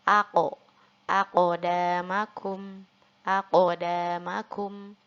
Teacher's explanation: maka harus kita pantulkan juga, harus kita qalqalahkan dan berbunyi aqo, aqdamakum, aqdamakum.